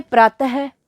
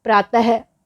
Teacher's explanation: मतलब विसर्गों का जो उच्चारण है वो ह के समान किया जाता है। जैसे प्रातः, हम जब इनका उच्चारण करते हैं प्रातः, अंत है, तो पीछे ह की आवाज़ आएगी, तो विसर्गों की आवाज़ क्या होगी, ह।